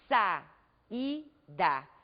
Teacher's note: nós observamos podemos observar que as vogais ficam em sílabas separadas são duas vogais pronunciadas com a mesma intensidade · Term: hiato